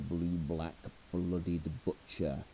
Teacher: suddenly there's this sudden cluster of these very, very, very dark plosives